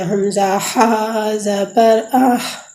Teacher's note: حلق کے درمیان سے ہا ادا ہوتی ہے